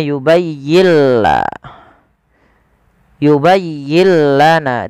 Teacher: Idghamnya gimana sih? Idghamnya adalah nun sukunnya diidghamkan ke huruf lam. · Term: idgham bila gunnah